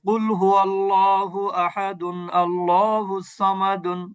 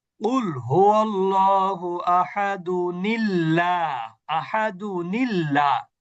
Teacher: আর হামজাতুল ওয়াসল হলেই তার পূর্বে যদি তানভিন থাকে, তাহলে মিলিয়ে পড়তে হলে আপনাকে হামজাতুল ওয়াসলটার পরিবর্তে ওইখানে একটা আগের তানভিনের একটা হরকত মাইনাস করে একটা জের যুক্ত নুন এনে তারপরে পড়তে হবে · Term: নুনে কুতনি